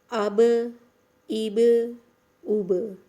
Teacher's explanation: اب جب با پر جزم لگے گی تو اس کی آواز پلٹے گی